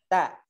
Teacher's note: Nah, kalau to ke gusi paling atas, to ke atas, to turunin ke bawah, da turunin lagi ke bawah, ta. Jadi ta itu mendekati gigi atau sedikit menyentuh gigi